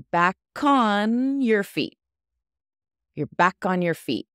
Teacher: In American English, we tend to say it Y-E-R, your.